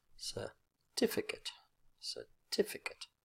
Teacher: second syllable is the strong syllable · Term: word stress